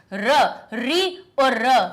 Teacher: री और र ये हमारे निकलते हैं मूर्धा से